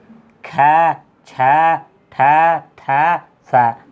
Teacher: इनके बोलने में क्या है, मुख से अधिक हवा निकलती है। देख लो, ख छ ठ थ फ, क्या मुख से अधिक हवा निकलती है इनके बोलने में। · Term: महाप्राण